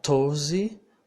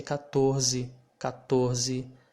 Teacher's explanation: the t will sound like the t in english but with less explosion